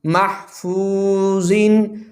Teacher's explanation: میم حا زبر ماہ، فا واو پیش فو، محفو، ضا 2 زیر زن، محفوظن، واو مدہ، حروف مستعلیہ ہے، ضا موٹا پڑھا جائے گا